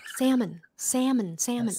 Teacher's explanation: you don't pronounce the l